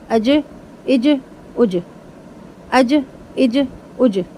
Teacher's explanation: ٹھیک ہے، ایس، اس، اس، زبان کی نوک دانتوں سے باہر نکال کے سا کو پڑھیں گے، ایس، اس، اس۔ پھر جیم حروف قلقلہ میں سے ہے، ہلا کر پڑھا جائے گا